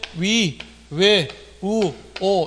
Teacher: 위, 외, 우, 오 이런 것들은 입술의 모양이 둥글다 해서 이것을 원순모음